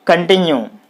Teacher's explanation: in this word you can find c o n con so the stress should be on the second syllable